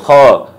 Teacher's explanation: গাইন খ, দুইটা হলো হলকের শেষ হইতে উচ্চারিত হবে · খয়ের মাখরাজ কি? হলকের শেষ হইতে।